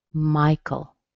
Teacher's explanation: The AE in the end, it doesn't sound like anything. It sounds like a schwa.